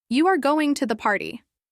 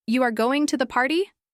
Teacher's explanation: But you are going to the party with a rising tone at the end. That's a question. · With a rising tone at the end. That's a question. The same words, two different meanings.